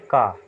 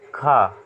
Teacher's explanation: अब वैसे भी आप लॉजिकल जान लीजिए, अल्प प्राण में जैसे आप बोलते हैं का खा, तो का आप जब बोलेंगे तो इसमें आप सांस अंदर को लेंगे, और खा जो है आप बोलेंगे सांस बाहर को लेंगे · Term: महाप्राण